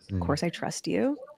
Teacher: it sounds like she's asking a question. She's got that uptalk going on.